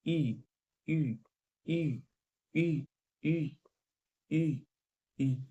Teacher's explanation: इसके उच्चारण में मुंह का लगभग मुंह बंद रहता है